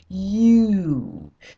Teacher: sound as in y and now let's take the word u we go from Y and we Glide down to U